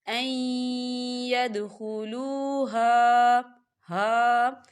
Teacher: این نون ساکن ہے، نون ساکن کے بعد یا ہے، یا جو ہے حروف یرملون میں سے ہے، تو یہاں پر ادغام ہوگا